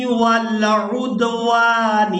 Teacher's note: واو کو الف مدہ کی وجہ سے کھینچ کر ادا کریں گے